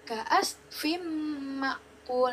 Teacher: karena ada tanda tanwin bertemu mim, maka menjadi dengung.